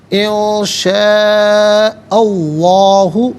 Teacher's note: شاء میں حمزہ پر زبر ہے، اسے اس میں اللہ کی حرف لام کے ساتھ ملائیں گے، درمیان میں سے الف نی حمزہ کو حذف کیا جائے گا۔ اس میں اللہ کی حرف لام سے پہلے والے حرف حمزہ پر زبر ہے، تو اس میں اللہ کی لام کو پر پڑھیں گے۔ زبر یا پیش ہو تو پر پڑھتے ہیں، اس میں اللہ کی حرف لام کو زیر ہو تو باریک کر کے پڑھا جاتا ہے، یہاں پر کر کے پڑھا جائے گا۔